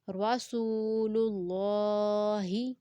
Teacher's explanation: را کو پر پڑھیں گے کیونکہ را زبر کے ساتھ ہے، سین کو 2 سیکنڈ تک لمبا کریں گے کیونکہ واو مد ہے اور اللہ لیٹر سے پہلے اب پیش ہے تو اس لیے اللہ والے لام کو ہم نے موٹا پڑھا